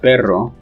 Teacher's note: that the trill involves several vibrations while flap only requires one in spanish when you have perro dog it is clearly a trill